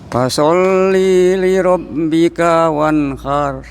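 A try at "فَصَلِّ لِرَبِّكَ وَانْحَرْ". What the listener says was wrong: Ayo, linya langsung disambung Pak.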